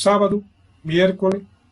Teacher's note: Passamos então para as esdrúxulas, que são chamadas também de proparoxítonas. A tonicidade está na antepenúltima sílaba.